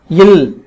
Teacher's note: மேல்வாய் பல்லின் அடியை நாவின் ஓரங்கள் தடித்து நெருங்குவதனால் பிறக்கிறது